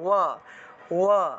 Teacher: ঠোঁট না লাগিয়ে ব উচ্চারণের মতো ওয়া উচ্চারণটা হয়ে থাকে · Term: অন্তস্তবের উচ্চারণটা